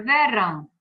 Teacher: na palavra verão, rão é a sílaba tônica e vé é átona